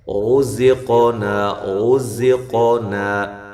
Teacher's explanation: قاف پہ قلقلہ بھی ہے اور زا کو زور کے ساتھ ادا کرنا ہے